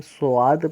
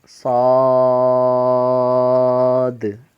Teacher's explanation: حرف مستعلیہ کا حرف ہے، اس لیے اس کو موٹا پڑھیں گے